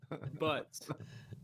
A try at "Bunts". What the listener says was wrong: No, with an N. Bunts.